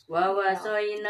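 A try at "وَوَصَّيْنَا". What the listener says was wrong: Tahan wawas ada tasdid.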